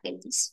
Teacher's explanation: feliz es una palabra aguda, ¿no? Que tiene la mayor fuerza de voz en lis.